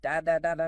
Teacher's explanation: Each syllable takes up roughly the exact same amount of time, giving it a very steady, machine gun-like rhythm. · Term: syllable-timed